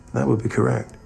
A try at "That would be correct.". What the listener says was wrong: Yeah, but he didn't say the T. Correct. didn't pronounce those T's. That'd be correct.